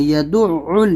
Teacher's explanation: یہاں پر عین کو نکالنا ہے، تشدید ہے، سختی کرنا ہے ، یدعل، یہاں پر تھوڑی سختی کرنا ہے آپ کو، یدع